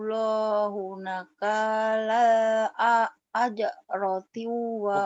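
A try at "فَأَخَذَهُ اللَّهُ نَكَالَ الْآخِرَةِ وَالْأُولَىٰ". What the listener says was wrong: fa'akhadahu Allahu nakalal akhirati bukan ajrati ya akhirati fa'akhadahu Allahu nakalal akhirati wal ula coba lagi ayo nakalan panjang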